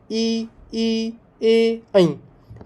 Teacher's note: अग्रभाग में जीवा अग्र ऊपर की ओर प्रयुक्त होती है